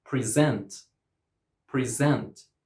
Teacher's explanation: So, as an adjective and noun, we pronounce it present and we put the stress on the first syllable, but as a verb, we pronounce it present and we put the stress on the second syllable